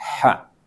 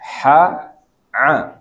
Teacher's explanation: cuman kalau ha keluar udara dia. Ha. Kalau a enggak keluar udara